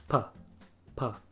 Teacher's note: We'll put our lips together, let the pressure build up behind them, and then release, this time without voicing. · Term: voiceless plosive sounds